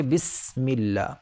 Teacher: لیکن جب سین کہیں گے تو ایک سیٹی کی آواز نکلے گی